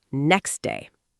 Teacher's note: the T in next often disappears through elision.